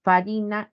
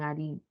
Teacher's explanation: la pérdida de la f se convierte una h en el español